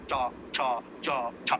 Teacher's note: खूब संघर्ष कर रही है जीभ टक्कर मार रही है संघर्ष कर रही है टूट जाता वो तो इसका इस विशेष · इनको स्पर्श संघर्ष कहते हैं, स्पर्श भी जोर से करे तो संघर्ष करती है